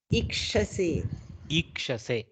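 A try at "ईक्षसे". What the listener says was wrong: Slight dirgha you have to do. Ikshase. Can you go?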